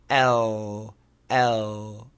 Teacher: The light l, the tongue actually goes between the teeth.